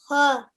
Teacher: So the ha is one of your throat letters, and it comes from the middle of the throat.